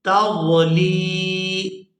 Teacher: یہاں جو یا ہے یہ یا مدہ ہے کیونکہ یا ساکن ہے اور اس سے پہلے زیر ہے، لام کو یا کے ساتھ ملاتے ہوئے کھینچ کر ادا کریں گے